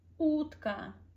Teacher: you pronounce sound U for like maybe 3 seconds. Te for maybe 1 to 2 seconds.